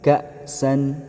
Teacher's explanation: kalau ada huruf hamzah, suara kita stop sejenak.